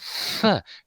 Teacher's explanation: It is a voiceless labiodental fricative.